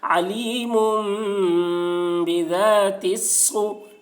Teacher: پیش کو جلدی پڑھیں، تھوڑا بھی نہ کھینچیں، معروف پڑھیں، مجہول آواز سے بچیں